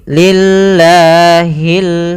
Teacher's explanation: langsung ke lam karena di sini ada tasdid di huruf lamnya alifnya tidak dibaca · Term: alif lam qamariah